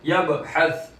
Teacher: बा साकिन है, कलकला होगा उसके अंदर। यबहस, बा की आवाज लौटती हुई आएगी।